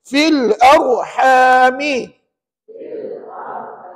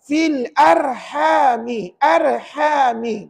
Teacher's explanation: Bukankah ra itu mati sebelumnya baris satu di atas maka layak dibaca dengan tebal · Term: R tebal